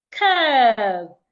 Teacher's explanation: The u r there should be articulated as a long sound. Curve. It's not kev.